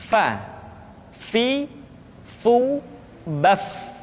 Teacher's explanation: Berikutnya pengucapan huruf Fa. Diucapkan dengan menyentuhkan ujung dua gigi seri kita bagian atas dengan bibir bawah bagian dalam. Fa. Seperti kita mengucapkan huruf F di dalam huruf Latin.